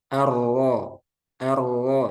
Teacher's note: eh samarkan takrirnya ketika dia bertasdid